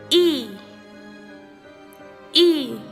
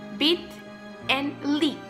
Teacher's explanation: The tongue is high in the front of the mouth. The muscles of the throat and tongue are tense. If the lips are drawn back, the vowel sound will be pronounced more accurately. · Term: sound E